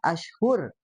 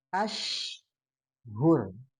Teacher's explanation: itu syin-nya dipaskan di tengah-tengah lidah, ya. Nah, karena terkadang jadi ke ujung gitu ya.